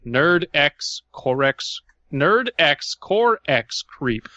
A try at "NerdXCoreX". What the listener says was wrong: When you're reading Leet usernames, the X is silent. It's Nerdcore Creep.